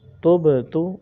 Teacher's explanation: جو با ہے اس پہ جزم ہے اور اس میں قلقلہ کریں گے. تُبْتُ آواز کو لوٹائیں گے